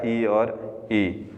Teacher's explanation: तालु जो मध्य का कोमल भाग, वैसे हिंदी में दो प्रकार के, कोमल तालु और कठोर तालु, लेकिन ये यहाँ अपन सीधा सा माने कि तालु से बोले जाने वाले स्वर है वो है ई और ई। जीभ का मध्य भाग तालु के टच करेगा, तब तालु से बोला जाएगा ई और ई